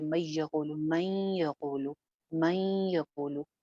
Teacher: हल्की-सी नून की आवाज़ यहाँ बाकी रह जाती है या अगर टर्मिनोलॉजी में बात करूँ तो नून की कुछ सिफ़ात बाकी रह जाती हैं।